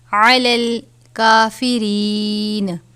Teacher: جاءہم ما عرفوا کفروا بہ فلعنۃ اللہ، لام سے پہلے پیش ہے، لام کو پر پڑھا جاتا ہے، علی الکافرین، کاف کے اوپر کھڑا زبر ہے، 1 الف کے برابر اس کی مقدار ہے